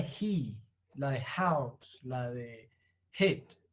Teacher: Fricativa, el aire sigue transitando por un canal estrecho, no hay oclusión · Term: fricativa glotal sorda